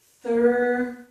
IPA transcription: θʌɹ